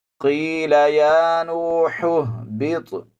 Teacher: یہ حا جو ہے پہلی، یہ حلق کے درمیان والے حصے سے ادا ہوتی ہے، اس میں، اور دوسری جو باری ہا ہے ان میں فرق کر کے پڑھیں گے۔